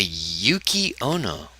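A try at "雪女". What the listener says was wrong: Yukki Onna. Yuki Ono, but you say it like Uno. Yuki Uno.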